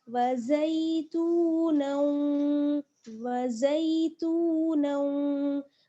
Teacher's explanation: आगे नून को हमें वाव के साथ मिलाना है, इदगाम होगा